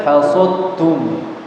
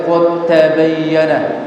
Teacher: Jadi qul-qulannya huruf dalnya hilang, masuk ke ta langsung ya. Namanya idgham mutajanisain ya.